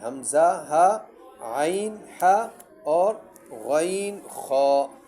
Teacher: ہا جو ہے حروف حلقی میں سے ہے، اور حروف حلقی 6 ہے: حمزہ، ہا، عین، ہا اور غین، خا. یہ حروف حلقی میں سے ہے، حلق سے ادا ہوتے ہیں، 6 حروف ہیں